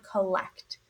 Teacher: Our first syllable has a schwah. · Our first syllable has a schwa, I hear that O representing the sound, collect.